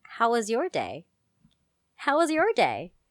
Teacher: it rises and curls upward because you sound like someone who wants to be your friend